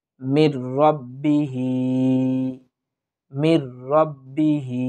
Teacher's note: হা খারাজের হি, এক আলিফ টানার চেষ্টা করব।